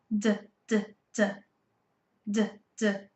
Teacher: we can feel that our throat is moving. It is vibrating. So D is a voiced sound. D, d. Try it with me.